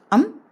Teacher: अनुस्वर एक ही है। अम जो जिसके उच्चारण में आधे म और आधे न का उच्चारण लगता है